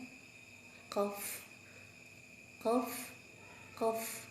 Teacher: Kita mulai dari pangkal lidah. Pangkal lidah ada huruf qaf. Dinaikkan pangkal lidahnya.